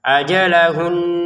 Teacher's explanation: Jadi kalau kita berhenti pun tetap ada namanya dengungan dua harakat.